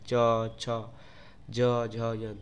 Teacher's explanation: उसके बाद है च वर्ग, ये तालु द्वारा बोला जा रहा है, हमको बोलने में, उच्चारण करने में तालु का ऊपरी भाग, तालु का मतलब प्रयोग हो रहा है, च, छ, ज, झ, य, तो इसे तालु बोला जाता है।